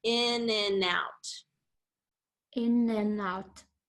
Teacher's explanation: the and gets reduced to in, you know, with just that N sound